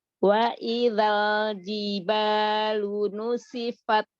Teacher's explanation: Jiba, jim sama ba, syiddah, jahar. Jelaskan, kuatkan.